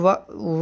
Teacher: व क्या है, दंतोष्ठ वर्ग का है। और इसे व जो है ऊपर के दांत प्लस निचले ओठ के माध्यम से इसका उच्चारण किया जाता है।